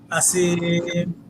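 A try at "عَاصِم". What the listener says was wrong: এই আওয়াজটা হবে না এই সিটি না হয় আরেকটু।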